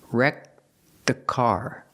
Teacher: You don't really hear the T when you link it with the next word.